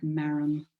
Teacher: And there's a play in there with the M sound and the first sounds that children make, the mama sound, that bilabial first sound that also sounds like marum.